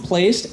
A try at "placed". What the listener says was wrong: Placed? I didn't hear the D.